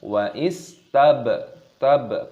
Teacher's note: baknya berharokat sukun, dikolkolah, dipantulkan suaranya. Tab, roq, qafnya juga di sini dipantulkan suara, dimatikan ketika kita berhenti, ketika kita waqaf.